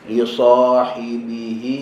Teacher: jaga huruf ha dekat hujung perkataan li sahibihi, okey, biar keluar daripada tekak, tutup. Li sahibihi.